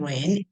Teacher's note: the final sound in rain is n and this is voiced